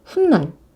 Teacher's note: 아니에요 훗날 어 이거 보세요 시옷 중간에 첨가가 되면서 발음도 훗날 여기 없던 니은이 생깁니다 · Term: 사잇소리